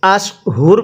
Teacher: ওয়াকফ করলে আমরা রয়ের নিচে দুই জেরকে বাদ দিয়ে দিব, আশহুর পড়ব।